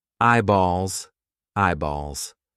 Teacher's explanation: What do you think? Yes, it's a dark L because it comes before a consonant.